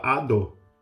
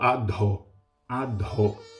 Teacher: é um D com som aspirado, é uma letra Mahaprana